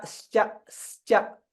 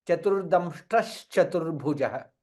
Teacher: Now therefore visarga followed by chakara, hence it will become sha.